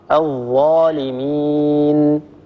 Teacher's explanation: الظاء من طرف اللسان مع أطراف الثنايا العليا، الطرف على الطرف